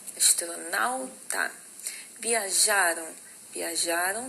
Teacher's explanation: Viajaram também é uma paroxítona, é o já, a sílaba tônica